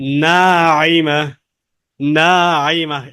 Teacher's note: আইনটা 3 আলিফ টানে টেনে পড়তে হয় কণ্ঠনালীর মাঝখান থেকে।